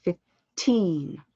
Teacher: i have a massive amount of air on the t